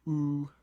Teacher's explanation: Something like oo is a high back vowel.